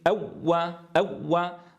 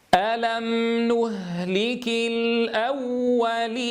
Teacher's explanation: حين نخرج الواو المشددة لا نقطع صوتها يا إخواني، لأن الواو حرف رخو